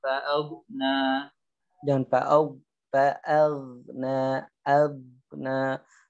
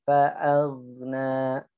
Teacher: Dan fa'aghna, aghna. Alirkan ga bukan syiddah. Suaranya ngalir.